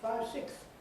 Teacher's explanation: But when they get this false impression, they want to keep the th, and then they find they can't say it all, so they lose the final S, and they say 5, 6.